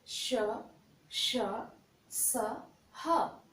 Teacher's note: इनके उच्चारण करते समय एक विशेष घर्षण होता है, जिसके कारण हमारे मुख से गर्म हवा निकलती है। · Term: ऊष्म व्यंजन